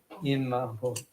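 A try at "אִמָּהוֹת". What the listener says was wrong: Imahot. Good.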